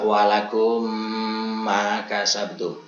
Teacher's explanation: Nah, hukum daripada idgham mimi ini hukumnya wajib atau harus dihunahkan sehingga ketika kita melafalkan ya harus benar-benar ya, terlihat seperti hanya satu huruf mim yang bertasdid